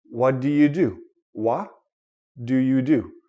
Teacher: T and D these are two different consonants but according to the tongue and the mouth they almost sound the same